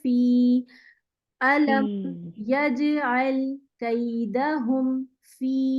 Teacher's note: یہ یائی مدہ لمبا کریں گے اس کو 2 حرکت پہ.